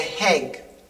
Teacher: I put h's on things. Instead of saying egg, I say heg.